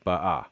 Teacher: But notice I have ba'a with the stress on the final syllable